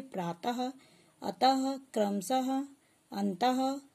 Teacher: विसर्ग, इसका उच्चारण आधे ह के समान होता है